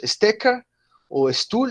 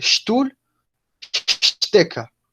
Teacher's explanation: Esa S no suena suave, esa S suena más fuerte cuando está antes de una T o cuando está antes de una P. Entonces no decimos Stecker o Stuhl, sino que decimos Stuhl, Stecker, cuando está antes de una T o antes de una P.